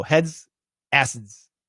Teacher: we say it fast in in a sentence where everybody understands the d can be cancelled